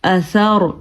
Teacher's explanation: را ساکن ہے، اس سے پہلے والے حرف پہ زبر ہے تو یہ را پر پڑھی جائے گی